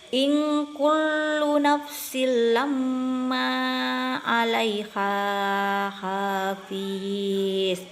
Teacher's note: gunnah karena huruf mim tasdid bacanya didengung 2 sampai 3 harakat · ikhfa atau samar. Nun mati bertemu kaf, cara bacanya samar